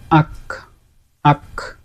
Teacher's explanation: কাফ বা কাফ যেটা কাফ কাফের মাখরাজ হচ্ছে এর একটু সামনে জিহবার শেষ অংশের একটু সামনে জিহবার মূলের নিকটবর্তী স্থান এবং উপরের তালুর কিছু অংশ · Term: ছোট কাফ